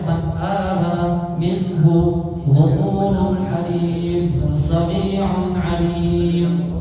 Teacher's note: gunnahnya tetap dibaca, tetap dipenuhi daripada sifatnya, yaitu yang mana sifat huruf nun ada gunnahnya maka dikenakan, tapi dibaca secara pendek, tidak didengungkan terlalu lama.